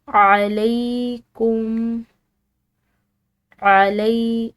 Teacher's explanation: لام کے بعد یا ساکن کی وجہ سے اس کو لمبا ادا کریں گے